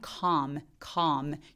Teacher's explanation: 때 come m 앞에 있는 엘도 발음하지 않습니다 아까 work처럼 그래서 턱 엄청 벌리면서 혓바닥이 바짝 바닥에 누워지는 약간 아소리에 비슷한